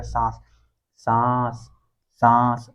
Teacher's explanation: इसी तरह सांस, सांस, सांस बोल के देखो, तो मतलब मुख से ज्यादा हवा निकल रही है, नाक से कम हवा निकल रही है